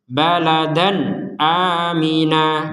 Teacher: ada tanwin bertemu Hamzah maka kita membacanya dengan jelas